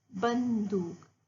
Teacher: ब और दू के बीच में न की ध्वनि सुनाई दी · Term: अनुस्वार